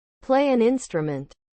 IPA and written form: pleɪ ænˈɪn.strə.mənt (Play an instrument)